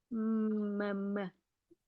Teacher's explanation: มันจะเป็นเสียงอือยู่ในจมูกนะฮะ